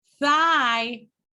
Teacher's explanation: entrediente interdental thigh is interdental between teeth